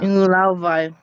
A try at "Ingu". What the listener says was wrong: before it sounded like you were saying Ina, like you had an A there, but then you changed it. So make sure you say Ingu, Ingu Lauvai.